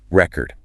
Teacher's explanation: The volume, the length, the pitch. It's all on that first syllable.